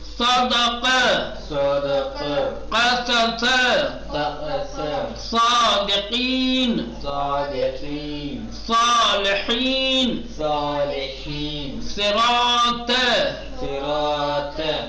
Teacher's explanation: حروف استعلا میں سے ہے، اس کو جب پڑھیں گے تو زبان کی جڑ اوپر کے تالو کی طرف جائے گی، اور پھر نتیجہ یہ ہوگا کہ خود بخود موٹا اور پرحجم ہو کر کے نکلے گا